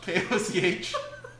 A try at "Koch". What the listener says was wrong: I think that's Coach. Usually, if there's an H afterwards, you don't just pronounce the first 3 letters of the name.